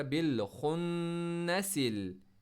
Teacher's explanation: نون پر stress کیا، خا کو موٹا پڑا، بالخنسل، نسل، کہیں پر کھینچاؤ نہیں ہے، نسل، آگے۔